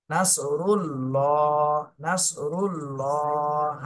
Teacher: এখানে আল্লাহ শব্দের ডানে পেশ এসেছে এই জন্য আল্লাহ শব্দ মোটা করে পড়তে হবে।